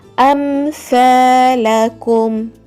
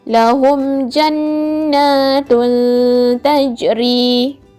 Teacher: Caranya adalah dengan menjelaskan sebutan huruf mim sukun tanpa dengun. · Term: izhar syafawi